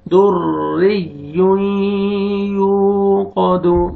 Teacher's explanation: اگر را کو باریک پڑھنا ہے، را کے نیچے زیر ہے، را کو در ری یو قا دو. قاف کو موٹا کر کے پڑھیں گے